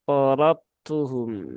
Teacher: huruf dal yang di sini itu bisa dikatakan dianggap tidak ada ya atau dileburkan menjadi satu bersama dengan huruf ta. Maka porotum ya, porobtuhum ya. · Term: kamil